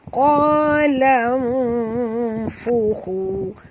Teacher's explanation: Lam di sini nun mati bertemu fa. Kita kena sorokkan bunyi nun ke dalam fa disertai dengung 2 harakat, ikhfa hakiki